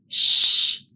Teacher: To make the sound of the consonant digraph sh, shh the air is blocked by the tongue on the roof of the mouth or the hard palate, the roof of the mouth.